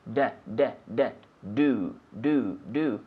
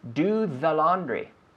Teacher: Do, the D, your tongue is inside and against the roof of your mouth. D, do. Then with the TH, the tongue comes out.